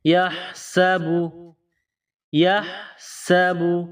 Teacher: سین کو پتلا کر کے باریک پڑھیں گے، سین میں سیٹی کی آواز پیدا کریں گے